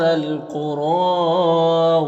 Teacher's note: قاف حروف مستعلیہ میں سے پر پڑھیں گے، را کو پر کھڑا زبر ہے تو را کو پر پڑھیں گے اور ایک الف کے برابر کھینچیں گے، یا میں کوئی حرکت نہیں، اس کو نہیں پڑھنا۔